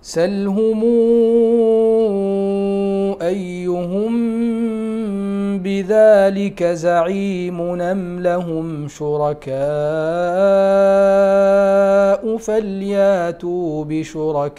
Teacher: نقل حركة الهمز للساكن قبلها وهو نون التنوين